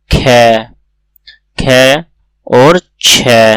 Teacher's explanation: अघोष के साथ साथ ये होता है महाप्राण।